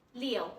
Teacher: Next, 六, read the word 六, with the falling tone, and read it very quickly